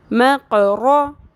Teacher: میم زبر قاف مق، رو زبر رو، مقرو۔ قاف اور رو دونوں کو پر کریں گے لیکن قاف کے اوپر قلقلہ بھی ہے